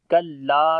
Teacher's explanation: کلا، لام کو لمبا کریں گے، الف مدہ ہے اور یہاں پر مد منفصل بھی ہے، حمزہ آ رہا ہے اگلے ورڈ کے شروع میں. کلا 3 سے 4 سیکنڈ لمبا کریں گے.